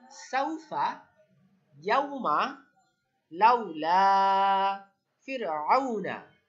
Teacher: আমরা বলতে পারবো না ইয়াউমা, এরকম টান দিব না, টান দিলে ওটা মাদ হয়ে যাবে। কিন্তু আমরা এখানে করতেছি লিন, আর লিন অর্থ নরম করে তাড়াতাড়ি পড়া। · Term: ওয়াও লিন